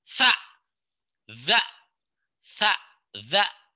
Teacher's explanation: Lidah dan giginya ditempelin. Kalau tha dia jadi S. Kalau zal dia jadi D sama Z.